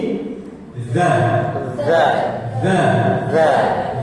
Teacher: Harus mengalir karena punya sifat rohwah, mengalir suaranya.